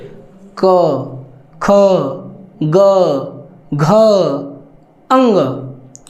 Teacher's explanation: जैसे जो क वर्ग है इनका उच्चारण कंठ से होता है।